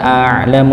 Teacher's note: Nggih, tidak dibaca tebal walaupun memang setelahnya bertemu dengan huruf yang tebal, lafaz Allah Subhanahu wa taala. A'lamu, ainnya dibaca sukun itu ya, maka dialirkan a'lamu sedikit, dialirkan sedikit saja.